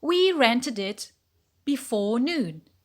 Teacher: because it is pronounced id it adds a syllable to the word so rented is two-syllable